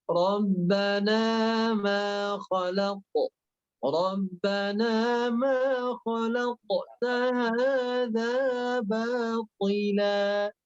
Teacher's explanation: Jadi tidak kholaq, tidak ditahan di dalam, lepaskan. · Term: huruf qaf